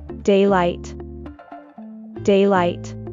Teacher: we stress the word on the first syllable